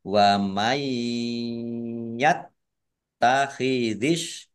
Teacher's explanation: Taknya dibaca double, ada tasdidnya.